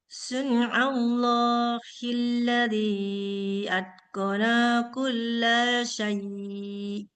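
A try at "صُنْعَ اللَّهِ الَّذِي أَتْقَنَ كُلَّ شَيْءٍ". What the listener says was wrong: Ini udah dipanjangin juga sinanya ini. Atqana kulla syai'. Jangan atqana kulla syai'. Jadi panjang dia.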